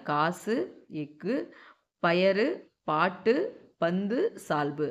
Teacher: இவ்வாறு தனக்குரிய ஓசையிலிருந்து குறைந்து ஒலிக்கும் உகரம் குற்றியல் உகரம்